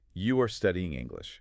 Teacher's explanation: If the speaker uses a rising intonation at the end of that sentence, letting their pitch slide upward on the word English, that rising pitch magically overrides the grammar and turns a statement into a question